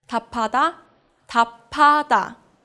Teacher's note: the 비읍 combines with the 히읗 to become a 피읍